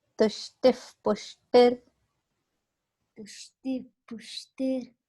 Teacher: Whenever there is this ihi sound visarga followed by p sound p, it becomes f sound, f sound.